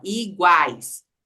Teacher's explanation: a gente fala iguais é o a que é fortão